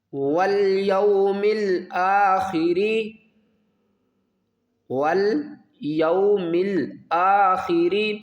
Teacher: خا کو ہم حلقے اوپر والے حصے سے ادا کریں گے، یہ حروف حلقی ہے